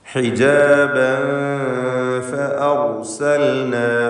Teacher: ഹിജാബൻ എന്ന തൻവീൻ ശേഷം ഫാ ഇഖ്ഫാ ഹഖീഖി നൽകി തൻവീനിനെ അവ്യക്തമാക്കി മണിക്കുക. മണിക്കലിൽ തർക്കീഖാണ്.